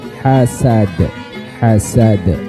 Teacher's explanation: Ketika dal ini berharakat sukun maka dipantulkan karena huruf qalqalah ya.